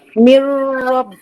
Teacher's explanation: Ni masuk dalam ra, nun tak nak bunyi.